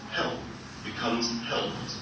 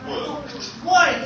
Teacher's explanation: When I add ED, the ED is going to be pronounced like letter T.